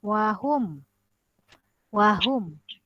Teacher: Mim mati jumpa huruf ya, izhar. Izhar bermaksud dibaca jelas di bibir.